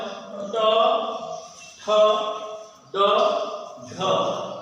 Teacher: মূর্ধা উচ্চারিত হয় ট, ঠ, ড, ঢ। এই বর্ণগুলো উচ্চারণের সময় জিহ্বা মূল তালুতে মূর্ধায় স্পর্শ করে। দন্তমূল এবং তালু মাঝামাঝি মূর্ধা স্পর্শ করে।